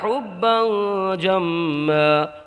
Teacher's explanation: حبا میں اخفا ہوگا تنوین میں، کیونکہ حروف اخفا میں سے جیم آیا تنوین کے بعد میں